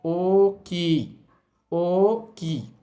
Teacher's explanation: আমরা এভাবে ভেঙে বলবো না। যেহেতু এখানে দুইটা ও আছে আমরা একটাই বলব কিন্তু একটু টেনে বলব।